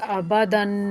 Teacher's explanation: جب آپ تنوین کو پڑھتے ہیں آپ کو اپنی آواز ناک میں جاتی ہوئی محسوس ہوتی ہے، اسی کو غنہ کہتے ہیں۔